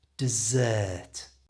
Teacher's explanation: dessert, which is a sweet at the end of a meal, has the ER stretched out